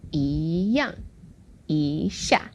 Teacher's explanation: So when we have two words, 一下, 一样, when the second word is the fourth tone, then the first E becomes the second tone